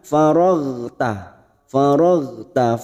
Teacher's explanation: huruf Gin sukun bukan qolqolah kita tahan